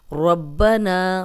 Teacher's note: سمیع اللہ لمن حمدہ، ربنا ولک الحمد، ربنا، را پہ زبر ہے اس کو موٹا پڑھیں گے، نا کو 2 حرکات لمبا کریں گے، الف مدہ ہے